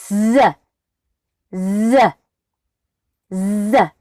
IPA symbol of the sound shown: z